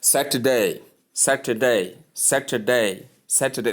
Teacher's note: So you call it Saturday. Remember, the t there, that is the middle syllable, is softened